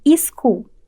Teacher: quando a gente adiciona uma vogal i para criar sílabas que seguem as regras fonológicas do português